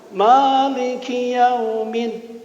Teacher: Bacanya harus Maliki pendek. Tidak ada jeda langsung. Maliki yaumiddin.